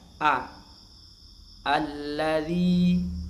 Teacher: Maka Hamzah wasal ini dibaca fathah, ya.